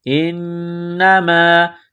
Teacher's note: نون مشدد ہے غنہ کریں گے، آواز ناک میں چھپائیں گے